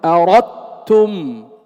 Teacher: هل تسمع للدال أثر ظاهر؟ أردتم، إذا لا تسمع شيئا للدال، إنما تسمع تاء مشددة. أردتم، أين ذهبت الدال؟ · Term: الإدغام الكامل